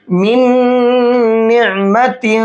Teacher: अगर नून साकिन के बाद नून आ जाता है तो पहले वाले नून को कर देते हैं ख़त्म, ठीक, और दूसरे वाले नून को गुन्ने के साथ पढ़ते हैं।